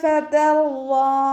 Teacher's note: കൽക്കലയുടെ letter അല്ലല്ലോ, അപ്പോൾ half സുക്കൂന് കൊടുക്കുക. വാദ് ഇസ്തിഅലാൻ്റെ ലെറ്ററാണ്. നല്ലോണം ഉയർത്തിയിട്ട് ഉച്ചരിക്കുക.